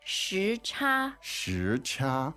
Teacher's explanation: a second and first tone, right?